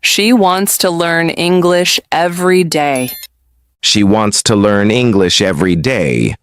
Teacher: You stressed wants, learn, English, and every day. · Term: sentence stress